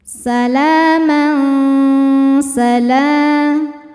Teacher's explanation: Ada lagi hukum ikhfa hakiki awsat karena tanwin fathah menghadapi huruf sin. Cara bacanya tanwin disamarkan menuju sin disertai dengungan.